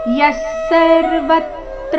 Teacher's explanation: ವಿಸರ್ಗದ ಉಚ್ಚಾರಣೆ ಅರ್ಧ ಸ ರೀತಿ ಮುಂದೆ ಸರ್ವತ್ರ ಮೇಲೆ ಆಘಾತ ಮುಂದೆ ತ್ರ ಬಂದ ಕಾರಣ ಯಸ್ ಸರ್ವತ್ರ ನಭಿಸ್ನೇಹಸ್